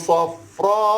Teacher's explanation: Boleh baca 4 pun boleh, 5 pun boleh, 6 harakat pun boleh, ketika mana kita berhenti.